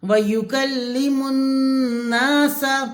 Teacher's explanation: سین کی زبر کو کھینچنا نہیں ہے